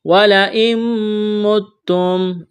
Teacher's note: نون ساکن کے بعد میم ہے تو یہاں پر ادغام کریں گے، نون کا میم میں ادغام کرنا ہے، غنہ کریں گے، آواز ناک میں چھپائیں گے۔ وَلَئِن مُتُّمْ، اس نون کو نہیں پڑھیں گے، تا میں سختی کریں گے۔